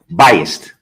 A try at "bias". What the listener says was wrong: No, bias, B-I-A-S. Not, there's no T at the end. Bias.